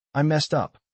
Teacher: The word messed is emphasized, showing her feeling of failure. The rhythm is short and staccato like a confession. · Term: stress